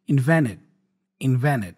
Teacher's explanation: you see again invented we have the n and T combination the T goes away so I pronounce only the N · T usually when you have that combination of N and T especially in American English the T tends to be dropped so we don't we only pronounce the m so instead of